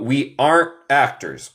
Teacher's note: En el acento estadounidense, mi acento, comemos. Comemos al T final.